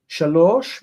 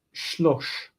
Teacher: Shalosh becomes shlosh because the first syllable is generally reduced if possible.